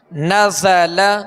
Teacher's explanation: زا کے اندر سیٹی کی آواز ہے، اس میں سختی ہے، تو اس کے اندر سختی اور سیٹی کی آواز جو ہے یہ اس کی خوبی ہے.